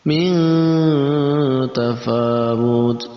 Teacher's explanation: Ya, kita lanjutkan lagi, ada nun mati bertemu dengan ta, maka masuk juga dalam kategori ikhfa. Kita baca dengan samar dan ditambahkan eng di antara nun mati dan ta.